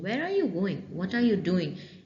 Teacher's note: it has a falling intonation we don't have a rising pitch here